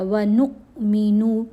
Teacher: یہاں نون کو حمزہ ساکن سے ملانا ہے تو جھٹکا دیا جائے گا